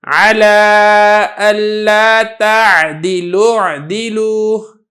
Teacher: لام کو براہ راست آپ نے عین کے ساتھ ملا دینا ہے۔